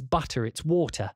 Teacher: usually the working class person has the glottal stop, like me, whereas like a richer person will pronounce the T's